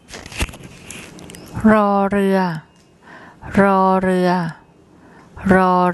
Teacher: as an initial consonant it makes a rolled Scottish R sound and as a final consonant it makes an end sound and